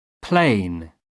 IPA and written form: pleɪn (plane)